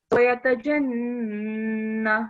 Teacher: So the noon here with shadda, again you have to give nasal sound, which you didn't give. So just make sure that you keep the noon sound for a bit longer.